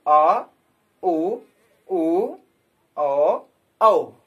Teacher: पश्च स्वर में जीभ का पिछला हिस्सा काम करेगा, जिसमें बड़ा छोटा उ, बड़ा उ ओ और औ आता है।